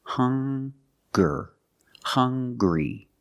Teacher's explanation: They also make the same sound with the nasal sound and the hard g.